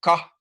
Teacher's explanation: the very back of the mouth in the in the throat the ka is produced in the very back